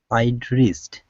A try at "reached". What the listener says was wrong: Okay, so what you're doing, you're pronouncing an S. You're saying re, or a Z sound. You're saying reesed. Instead of rees, it's ch, like my name. Okay, so I want you to say my name, Chad. Okay, that first sound that you say, ch, that's what you want to pronounce right there. So it's reach, reached. Okay, so I'd reached.